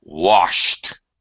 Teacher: unvoiced sound wash there's no voice sh it's just air